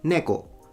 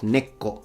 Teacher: he puts a little tsu, like a doubling of the K. That's incorrect.